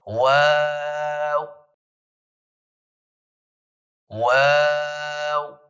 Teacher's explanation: شروع میں بھی ہونٹ گول ہوں گے، پھر درمیان میں ہونٹ تھوڑے کھلیں گے، پھر آخر میں دوبارہ جا کے ہونٹ گول ہو جائیں گے اور پھر یہ حرف پورا ادا ہوگا.